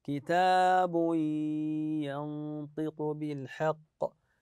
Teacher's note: الا وسعها كلمه يسيره كتاب بتنوين الضم ولدينا كتاب ينطق ايضا هذا التنوين يدغم في حرف الياء لان الياء من حروف ينمو حروف الادغام بغنه